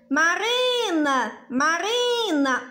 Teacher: Marina, Marina, o ri é mais forte. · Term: sílaba tônica